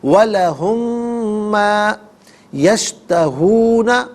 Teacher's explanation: وَلَهُمْ میں میم ساکن ہے، اسے ما کی میم کے ساتھ ملا کر میم کی آواز کو غننے کے ساتھ ادا کریں گے۔